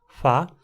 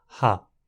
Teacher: em vez de uma fricativa bilabial fa, temos uma fricativa glotal ra